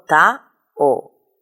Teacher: La O y la I se pronuncian en dos sílabas diferentes.